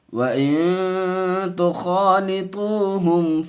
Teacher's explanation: اخفا کا قاعدہ، گنہ کر کے پڑھیں گے، خا کو منہ بھر کر کے بولیں گے، پر کر کے پڑھیں گے، میم کو ظاہر کر کے پڑھیں گے۔